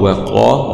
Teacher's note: واو فتح واو، قاف فتح قا، وقا، ومعلوم أن القاف هنا في أعلى درجات التفخيم لأنها مفتوحة وبعدها ألف